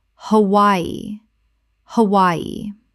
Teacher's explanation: Three syllables with the W making a Y sound.